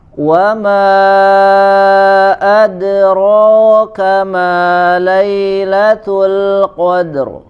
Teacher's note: Wa dimanyunkan, ma mad jaiz ya, dipanjangkan sampai 4 atau 5 harokat.